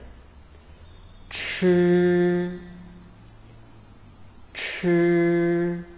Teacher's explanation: 吃 吃 When we pronounce 吃, we should first roll up the tip of your tongue close to the hard palate, block the airflow. Then suddenly open it, let the airflow rush out from your mouth between the hard palate and the tip of your tongue.